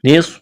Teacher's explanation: نصف نون کو سواد کے ساتھ ملانا ہے. سواد میں سیٹی کی آواز پیدا کریں گے. سواد کو موٹا کرنا ہے. فا کو جلدی پڑھیں گے.